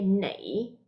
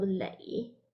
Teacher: if you listen to older people talking Cantonese, especially from like Guangdong areas, you'll hear nei instead of lei